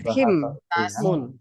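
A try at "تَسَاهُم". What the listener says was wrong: Tashim. Itu ada panjangnya ya.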